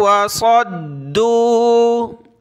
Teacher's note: صاد کو موٹا کیا، اس کو ملائیں گے دال کے ساتھ. آگے دال کے اوپر تشدید ہے تو اس کو جمع کر سختی کے ساتھ پڑھنا ہے.